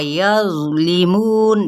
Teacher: ज़ा को नरमी से भी पढ़ना है और साथ में इसका दूसरी क्या सिफत है, इसमें पुर भी पढ़ना है